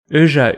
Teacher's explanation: specifically means good fortune eja is the long version of richa it represents a long mid-rounded front vowel like the eu in french chantez or the umlauted o in german